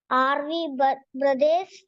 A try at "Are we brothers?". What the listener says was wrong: Are we brothers? ചോദ്യം ചോദിക്കണ പോലെ ശൈലി വരട്ടെ. Are we brothers?